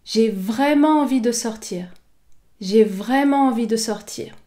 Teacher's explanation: La voyelle est de la syllabe vrai est prononcée de manière plus longue que les autres voyelles et également de manière plus forte. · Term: l'accent d'insistance